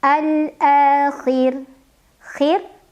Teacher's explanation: ra-nya apabila berhenti disukunkan dan dibacanya tarqiq